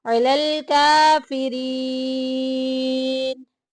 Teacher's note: काफिरीन में देखें या साकिन पीछे जेर या मद्दा का कायदा जारी हो रहा है, एक अलिफ के बराबर लंबा करेंगे।